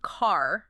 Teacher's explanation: that R sound it doesn't just hang out at the end it kind of like changes the whole vowel